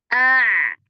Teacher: ketika kita ucapkan a akan terasa bahwa suara ain tidak berhenti seketika dikarenakan gerakan lisanul mizmar ke arah belakang